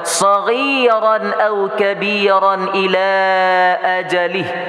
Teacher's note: Tanwin di atas ra bertemu dengan alif hukumnya idhar jelas tidak berdengung.